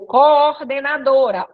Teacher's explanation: iato dois sons vocálicos fortes como eles são fortes eles vão ficar em sílabas separadas